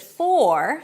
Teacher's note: The word for is stressed and then I need to pronounce it just like that with a nice long or as in for. However, when the word for is unstressed, and that's usually the case, then the for is reduced to fur. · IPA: fɔːr